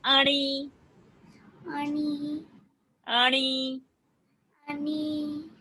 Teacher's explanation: while you say ani, let the tongue touch the roof of the palate.